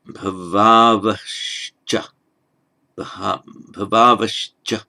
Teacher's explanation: With the sandhi, that subdotted H that we write in transliteration, the visarga, as it's known, that becomes a sh. · Where you get a final visarga followed by a ch or a ch, it becomes a sh.